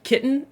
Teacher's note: Utah accents, we don't say our T's.